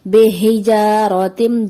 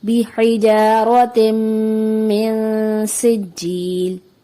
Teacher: ترمیہم، را کو ادائیگی میں پر پڑھنا چاہیے کیونکہ را سے پہلے زبر ہے لیکن یہاں باریک پڑھ دیا جاتا ہے جیسے ترمیہم، جو درست نہیں، درست ادائیگی ہے ترمیہم بحجارۃ، یہاں عموماً جو غلطی ہوتی ہے زیر کو مجہول پڑھ دیا جاتا ہے